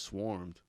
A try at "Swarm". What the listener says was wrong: Yeah, you said Swarmed. It's Swarm.